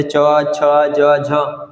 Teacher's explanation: तालु है ना बोलने के दौरान जीभ तालु से टकराता हो